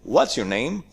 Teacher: what's your name we have a rising intonation and then we have a falling intonation